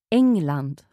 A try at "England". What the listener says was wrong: So there's no hard G sound in there. Listen again. England.